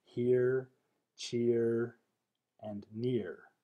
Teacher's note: ear is also a transition from a front vowel to er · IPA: /ɝ/